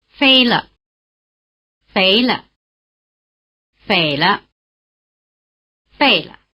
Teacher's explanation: The neutral tone is actually slightly different after each of the four full tones.